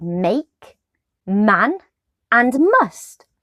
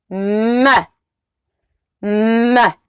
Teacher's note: The sound M is voiced and a consonant sound. It's also known as a bilabial nasal.